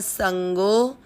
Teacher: आपको गो की मात्रा को लंबा खींचना है